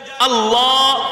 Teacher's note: আল্লাহ বললে দেখবেন জিহ্বাটা একটু গোল হয়ে যায় আল্লাহ উপরের মাড়ির সাথে জিহ্বাটা লাগে যদি জিহ্বাটা হাড্ডিওয়ালা শক্ত হইতো তাহলে জিহ্বাটা নরম হইতো না আর